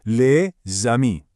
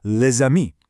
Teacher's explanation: See how that S creates a Z sound to bridge the gap?